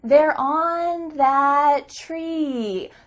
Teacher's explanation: I said it in a little bit higher pitch, and I elongated some vowels naturally. I wasn't thinking I should elongate these vowels so that my son can understand me clearly. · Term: baby talk